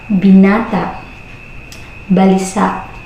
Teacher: Kasunod naman ay ang tugmang patinig na may impit. Ito ay nagtatapos sa patinig na may glottal sa pasara sa pagbigkas.